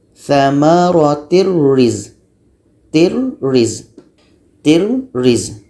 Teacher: Tanwin hilang masuk ke roh. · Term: tidak ada dengung